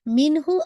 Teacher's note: اس پہ ایسے نہیں کر سکتے مین ہو، نہیں مین ہو، نون ساکن کو پورا ساؤنڈ کمپلیٹ کر کے ہو کو آپ نے فوراً گریب کرنا ہے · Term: اظہار حلقی